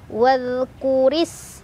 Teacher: Sinnya punya sifat hames, ada aliran angin dan punya ciri khas sofir, ada desisan seperti suara ular. · Ra dibaca secara tarkik karena berbaris kasrah, ya, di bawah, jadi ditipiskan.